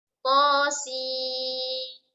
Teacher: Kita baca dengan 6 harokat. Ini adalah mad lazim harfi musaqqal karena ada terjadinya idgham atau tasydid.